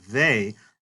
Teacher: as you pronounce this word they, you will feel your vocal cords vibrating. So it is not this kind of TH sound at all, but it's like the TH in think.